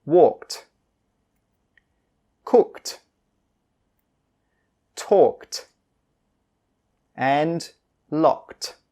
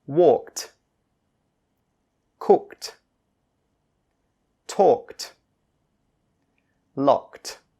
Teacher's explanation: when you have K D at the end of a word the Ed D sound is pronounced as a t